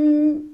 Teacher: والنون كذلك كما اختها الميم لابد تاقف عليها تعطيها الرخاوه الجزئيه الجريان الجزئي للصوت